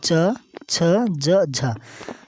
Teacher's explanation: च छ ज झ ये तालू से बोला जाता है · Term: तालव्य व्यंजन